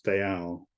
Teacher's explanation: But anything as two syllables with the emphasis on the yal